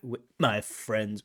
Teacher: there's like a glottal stop attack